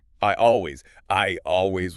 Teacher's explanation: Your tongue is already high in your mouth for I, so it's super easy to just slip in that J to connect to always. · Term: Y sound